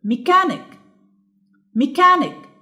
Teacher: لو لاحظتوا ان انا الصوت الانتونيشن بتاعي هادي وبعد كده بيعلى وبعد كده بيهدى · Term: الستريس